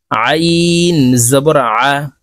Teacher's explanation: আইন হরফ হলকের মধ্যখান থেকে চাপ দিয়ে উচ্চারণ করতে হবে, কারণ আইনের মখরাজ হলকের মধ্যখান থেকে হবে।